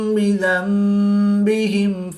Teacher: نون ساکن کے بعد حرف با ہے تو یہاں پر اقلاب ہوگا، نون ساکن کو میم سے بدل کر غنہ زمانی کر کے پڑھیں گے